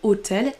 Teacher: Le mot hôtel qui en français n'est pas accentué. Hôtel les deux syllabes sont accentuées ont la même intensité alors qu'en anglais il y en a une des deux qui est accentué.